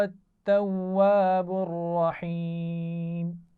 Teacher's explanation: انہو اس نون پر بھی غنہ ہے، اور هو التواب الرحیم یہ تینوں الفاظ ملا کر پڑھے جا رہے ہیں تو توجہ سے پڑھیں گے. رحیم میں را کو موٹا پڑھنا ہے اور اس کے بعد ہا ہے جو باریک پڑھی جائے گی